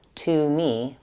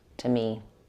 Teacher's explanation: To gets reduced to tuh in fluent speaking, not to me, but to me.